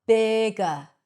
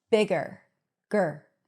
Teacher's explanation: In American English, bigger, gur. So the R takes over the schwa and you hear an R sound. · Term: schwa R